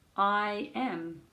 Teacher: you can hear the I and then the y and then the am. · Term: sneaky y